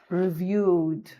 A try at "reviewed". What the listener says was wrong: You have a tendency to not always pronounce your ed very very well.